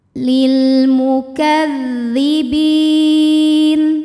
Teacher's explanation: Hamzah wasalnya dibuang karena kemasukan lam Jar lam dengan harakat kasrah